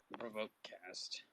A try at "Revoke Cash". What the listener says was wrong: not cast, cash, like money. Cash.